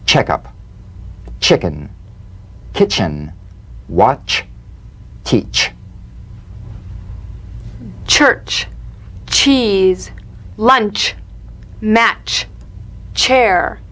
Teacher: feel a sharp crisp percussive sensation between the tip of the tongue and the gum Ridge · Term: crisp staccato